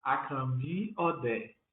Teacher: o meu primeiro nome tem tom baixo e alto e o meu segundo nome tem tom médio